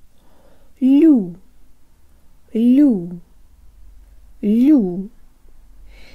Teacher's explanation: a real Russian U sound with jaw forward and duck lips, you have the first syllable.